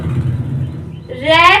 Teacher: रे को बोलने में जीभ कांप जाती है · रे को बोलोगे तो जो हमारी जीभ है वो कप कपी सी हो जाती है, यानी कि कांप जाती है। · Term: कंपित या लुंठित व्यंजन